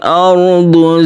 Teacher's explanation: di sini ada sukun ra yang sebelumnya ada fathah, maka dibaca ra tafkhim atau ditebalkan. Ra tebal ini disebut ra tafkhim atau istilah lain adalah mufakham.